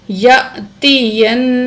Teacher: غنہ کریں گے، یعنی کہ ناک میں آواز لے جا کر ٹھہرائیں گے